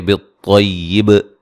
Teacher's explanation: بالطیبی خا کو موٹا ادا کریں گے. وقفاً با پہ قلقلہ واضح کریں گے